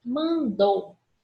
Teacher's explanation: o som sai do nariz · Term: som vocálico nasal